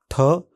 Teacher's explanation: इस ध्वनि के उच्चारण में भी जीभ का सिरा पीछे की ओर मुड़ता है, कठोर तालु को छूता है। संपर्क हटने पर हवा अतिरिक्त झोंके जोर से बाहर निकलती है।